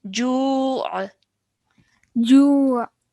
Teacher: really try and make that ayn sound at the end